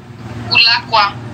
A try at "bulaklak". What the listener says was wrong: No, bulakwa. No. Bulaklak. No, bulakwak, no. No. B U. Bulaklak. Bulaklak. I say laklak. Laklak. Yes, bu. Yes, bulaklak.